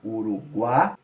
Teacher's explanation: a gente tem a semivogal U, a vogal A e a semivogal I. Ele sobe pro A, Uruguai.